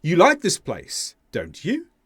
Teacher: here the intonation went up on you the subject pronoun so this is a question I'm not sure if she does